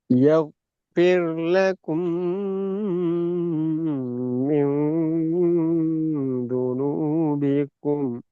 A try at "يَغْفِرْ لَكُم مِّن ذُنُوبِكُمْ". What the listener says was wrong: அந்த கும்பல துனூபிக்கும், கு துனூபிக்கும். நான் போன கிளாஸ் என்ன கோ கோ என்ற சவுண்ட்ல இருந்து கு என்ற உச்சரிப்புக்கு வரணும்னு சொன்ன ஞாபகம் போன கிளாஸ் டிஸ்கஸ் பண்ற நேரம். திருப்பி அதே repeat ஆகுது. இன்னும் அது பண்ணிடணும். கு யஃபிர் லக்கும், கு இந்த யஃபிர் லக்கும், கோ அல்ல கு.